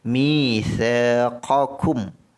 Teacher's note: mim mati ini mesti disebut dengan jelas. Itu namanya izhar syafawi. Sebut mim dengan jelas.